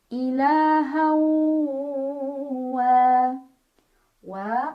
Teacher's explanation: Cara bacanya tanwin fathah dimasukkan atau dileburkan ke huruf waw sambil nahan dulu, dengung dulu. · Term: idgham bi gunnah